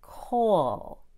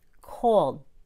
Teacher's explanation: That L sound kind of continues. Coal. But when I add the D, there's a feeling of sudden stopping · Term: held D